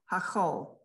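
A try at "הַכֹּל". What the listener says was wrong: Hakol, good.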